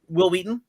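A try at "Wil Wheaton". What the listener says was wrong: Will Wheaton? Will Wheaton? Why are you putting so much emphasis on the H?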